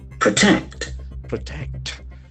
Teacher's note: So we can see that the accent falls on the second syllable.